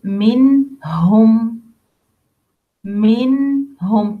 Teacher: nun sakina, tip of the tongue with the two top front incisor, and the following letters like 6 letters: al-hamza, al-ain, al-ghain, al-kha, and letter al-ha, letter say minhum, minhum, clear nun and clear ha from its articulation point. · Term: إظهار